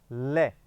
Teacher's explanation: लय एक ऐसा वर्ण है जिसमें जीभ के दोनों हिस्सों से, इधर से और इधर से, बगलों से हवा निकलने के कारण इसको पार्श्विक वर्ण कहा जाता है। लय जो है वो अकेला पूरी वर्णमाला में पार्श्विक वर्ण है।